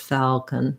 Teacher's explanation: And I may close falcon, or I may just falcon, make it that L with mostly the back of the tongue and not even actually closing it and lifting it like I do for a typical dark L.